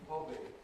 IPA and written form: ˈhɒbi (hobby)